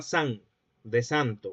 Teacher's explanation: se pierden unos cuantos fonemas al final de la palabra, se pierden dos sílabas. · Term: apócope